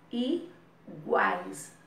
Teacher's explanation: O A e o I fica todo juntinho na mesma sílaba. E a letra A, que fica no meio, né, do iguais, a vogalzinha fica no meio, é o A, é a que a gente sente mais presença. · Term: tritongo